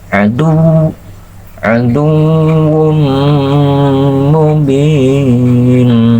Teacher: larikan ke hidung ke hidung ketika mengucapkan aduum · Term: gunah